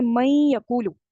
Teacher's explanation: اب نون تھا مدغم، یا تھا مدغم فی، نون کو آپ نے یا میں داخل کیا بٹ غنہ موجود ہے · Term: ادغام ناقص